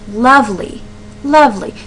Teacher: the emphasis is on the beginning of that word